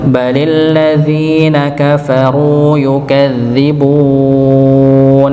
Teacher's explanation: bali linya itu masuk kepada lam yang bertasydid pada kata alladzi